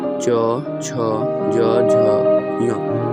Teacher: इनका उच्चारण स्थल होता है तालु। तालु से हवा टकरा कर निकलती है। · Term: च वर्ग